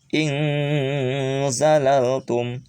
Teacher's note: Harus disamarkan nunnya antara n dan ang.